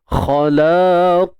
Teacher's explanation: Untuk qaf tebal, kha pun sama tebal.